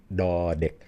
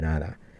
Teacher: what a d actually is is a pre-glottalized n. Da dek, it's not even from teeth.